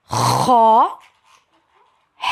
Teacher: خا نقطے والا خا جس کو بولتے ہیں۔ خا حلق کا وہ حصہ جو منہ کی جانب ہے وہاں سے ادا ہوگا۔ خا جس کو ادنیٰ حلق بھی کہتے ہیں۔